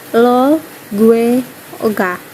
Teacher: vokal E sebagai vokal depan, tegang, dan tidak bulat, sedangkan vokal O sebagai vokal belakang, tengah, dan bulat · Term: vokal E dan O